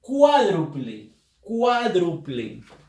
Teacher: la palabra cuádruple, la fuerza de voz la lleva la sílaba cuá